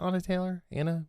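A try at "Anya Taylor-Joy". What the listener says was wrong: Like, I've been saying Anna, but it looks like it's Anya. Anya.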